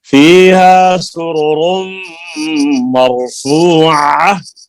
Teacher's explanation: रा दोनों फुल हैं, पुर हैं, आवाज पुर है इनकी। और सुरुरुम यहाँ पर गुन्ना भी होगा